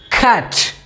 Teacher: और यह आवाज़ निकालने के लिए हमारी जो जीभ का पिछला हिस्सा है वो मुंह के ऊपरी सतह के बीच छुआए और कल्पना करें कि समुद्री की लहर मुंह से ध्वनि को धकेल रही हो, इस तरह से।